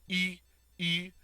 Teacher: It's pronounced E, E, like you're saying a long E through rounded lips. So when you, sometimes when it, well, a lot of times when English speakers go to say this word, it ends up sounding like the word wheat. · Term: U sound